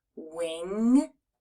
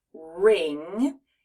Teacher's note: lifting the back of our tongue and then we're going to touch the back part of our tongue against the roof of our mouth and push air out through our nose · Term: nose sound